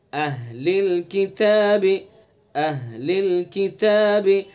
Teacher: حمزہ کو اور ہاں کو صاف اور واضح پڑھیں گے، اہل الکتاب، اہل الکتاب، حمزہ کو بھی سینے سے نکالنا ہے اقصائے حلق سے، اور ہا کو بھی · دیکھیں حمزہ اور ہا دونوں کا مخرج ایک ہے، اقصائے حلق